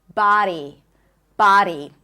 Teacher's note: the D is like a flap D. So, it sounds more like a R sound. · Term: flat D